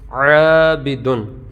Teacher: الف سے پہلے عین جو ہے یہ باریک حروف میں سے ہے، حروف مستعلیہ میں سے نہیں، لہٰذا الف کو باریک پڑھیں گے۔ تو الف سے پہلے اگر پر حروف میں سے کوئی حرف آ جائے تو الف کو پر، اور باریک حروف میں سے کوئی حرف آ جائے تو الف کو باریک پڑھیں گے۔